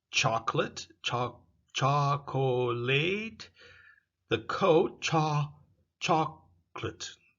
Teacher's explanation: the O disappears. That's called elision.